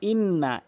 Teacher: [music] ই এখানে তিনটি নিয়ম রয়েছে হামজা নুন জেরে ইন নুন জবর না ইন্না এখানে তাসতিদ চিহ্নটি দুইবার উচ্চারণ করতে হয় যুক্ত অক্ষরের ন্যায়